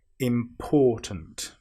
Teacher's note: Now, we need to be very careful with this word, because some people will put the stress on the im, which is wrong. We need to put the stress on the or.